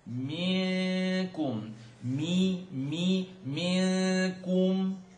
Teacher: Noon sukoon followed by kaf, tongue not touch, ikhfa, and it's light.